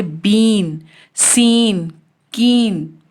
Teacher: lips हमारे spread होते हैं, चौड़े होते हैं, अनराउंडेड पोजीशन भी बोलते हैं इसे हम